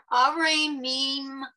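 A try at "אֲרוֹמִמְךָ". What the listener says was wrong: All right, let's slow down. Aromimcha. Aromimcha. Okay, you need the ro as the second syllable.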